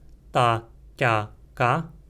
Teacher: 3 oclusivas surdas: ta, kya, ka, sem uma oclusiva bilabial surda